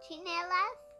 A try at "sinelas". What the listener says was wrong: No, chi, that's chi. Sinelas.